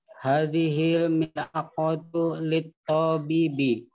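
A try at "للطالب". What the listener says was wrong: Lit-talibi. Bukan lit-tabibi, jangan naik ke atas, di bawah ya. Lit-talibi.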